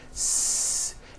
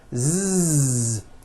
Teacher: if you didn't change a thing you just added voicing what would the S sound become it would become a z sound Z so s has no voicing s z has voicing Z